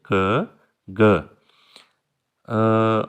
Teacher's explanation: ये हम पहले जैसे कर चुके हैं कि व्हीलर साउंड है क ग, कि आपकी जो साउंड है वो जब ये साउंड आप प्रोड्यूस करते हैं तो आपकी जो टंग है वो कर्ल बैक करती है यानी पीछे की तरफ मुड़ जाती है क ग।